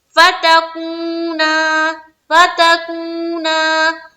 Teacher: वाव मद्दा को किस तरह पढ़ते हैं, एक अलिफ की मकदार के बाकदर खींच के